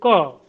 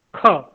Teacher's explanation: जो ध्वनियां हैं, जो वर्ण हैं, उसके भी फिर अलग अलग अपने अपने प्रकार हुआ करते हैं। तो क अल्प प्राण है, ख जोड़ दे रहे हैं हम, ख, वो महाप्राण ध्वनि हो जाती है।